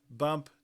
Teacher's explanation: You can see the voicing in the B but not in the P. So the voice onset time is negative for B.